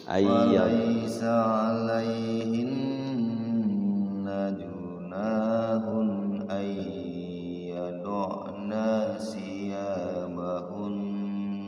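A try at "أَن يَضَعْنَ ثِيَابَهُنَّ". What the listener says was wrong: Ayyadna nanya pendek.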